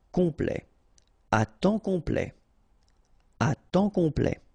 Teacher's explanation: OM is nasal here, just because you get your P after that